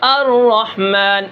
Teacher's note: تکرار صفت اس لیے ہے کہ را کے اندر تکرار ہونے سے ہم نے بچانا ہے، بہت سارے را پیدا نہ ہو جائیں